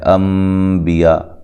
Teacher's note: یہاں نون ساکن کا اقلاب مع الغنہ ہے، نون کو میم سے واضح طور پہ بدل کے پڑھنا ہے